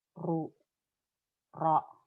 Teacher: ro dan ru itu menjadi tafkhim, lebih tebal